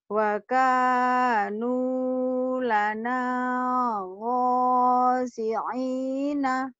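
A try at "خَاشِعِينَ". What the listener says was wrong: Bukan go. Kho. Ketukar dulu ya go sama kho. Kho itu khosyi'ina. Khosyi'in. Wa kanu lana khashi'ina. Wa kanu wa kanu lana khashi'ina.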